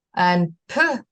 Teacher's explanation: And p, I should mention, is in front because the lips it's a bilabial unvoiced stop. So your lips are pressed together, and it's in front of your mouth.